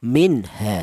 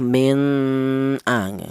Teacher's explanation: Ihar itu artinya jelas. Cara bacanya nun mati ini dibaca jelas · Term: izhar